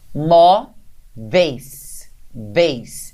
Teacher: Eu abri a boca uma vez só, então as duas vogais foram pronunciadas juntas. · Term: ditongo decrescente